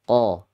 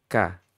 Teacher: Kalau Qa sifatnya isti'la, meskipun sama-sama syiddah ya. Kalau K sifatnya istifal.